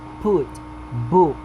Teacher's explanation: back near close rounded